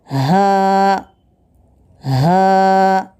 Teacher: हा, हलक के आखिरी हिस्से से अदा होता है